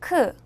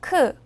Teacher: 크는 그를 소리낼 때와 같은데요 그보다 바람을 더 많이내는 소리입니다